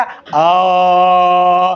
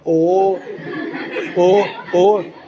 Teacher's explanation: अब उसी बोलेगा ओ, देखिए मुंह सुअर जैसा बनेगा, ओ ओ ओ। तो जब तक आपका ओठ घूमेगा नहीं तब तक आपका कंठ ओष्ठ हुआ नहीं। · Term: कंठोष्ठ